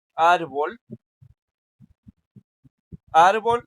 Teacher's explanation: es la sílaba ar que suena más fuerte. Este, entonces por eso por eso decimos que es est en grave, ¿no?